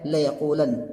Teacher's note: یہ نون پر یہاں پر تشدید نہیں ہوگا، ایسے پڑھا جائے گا لیقولن ، کیونکہ یہ نون خفیفہ کی گردان یہاں پر چل رہی